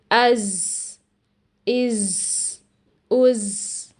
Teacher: ہم زا ادا کرتے ہوئے ہوا بھی جاری کر دیتے ہیں جس کی وجہ سے زا کی آواز سین کے اندر مکس ہو جاتی ہے اور ایسی آواز سنائی دیتی ہے، از، از، از۔